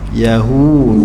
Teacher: du sifat dia nipis du sifat dia lembut hujung lidah di belakang gigi atas